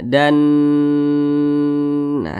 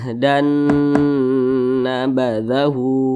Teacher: Didengungkan. Didengungkan itu suaranya itu kita tahan atau kita panjangkan kira-kira 2 ketukan, 2 harokat. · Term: idgham bi gunnah